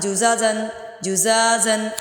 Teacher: زا لمبا کریں گے الف مدہ کی وجہ سے